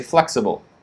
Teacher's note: In the first word, flexible, major stress, the stress is flex. flex, and then it gets quick, sible, sible, sible, flexible, sible.